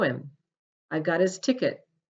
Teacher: do you see how the H disappears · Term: silent h